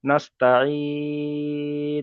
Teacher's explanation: যখন থামবো তখন আমি পড়তে হবে নাস্তাইন বলে এখানে 3 থেকে 4 আলিফ পরিমাণ টেনে পড়তে হবে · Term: মাদ্দে আরজি ওয়াকফি